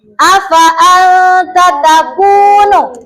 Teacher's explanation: anta di sini dibacanya samar atau dengung. Jadi tidak jelas bukan anta afaan takunu gitu ya. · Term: ikhfa